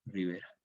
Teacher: Luego, esta A mayor queda E, ripeira, la P sorda intervocálica sonoriza en B y queda finalmente Rivera